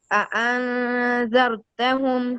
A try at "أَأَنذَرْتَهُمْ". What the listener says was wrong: را کو بھی صحیح پر نا، پر پڑے نا. انذرتہم بولو.